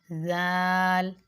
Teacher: یہ نرمی سے پڑھے جانے والے حروف میں سے ہے اور زبان کی نوک سے ادا ہوتا ہے